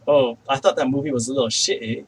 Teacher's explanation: he doesn't actually say the t he actually just like does a glottal stop instead · like he never says a double t he he has to instead of saying a t he actually does a glottal stop so it's like oh i thought that movie was a little